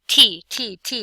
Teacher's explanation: Hold up your hand in front of your face and say T, T, T, or T, T, T, you feel a puff of air.